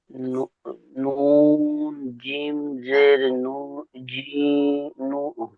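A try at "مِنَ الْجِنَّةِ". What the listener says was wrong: জিমটি আগে হবে, জিমটি নুনের সঙ্গে যুক্ত হবে। জি, তা, জি, হা নয়,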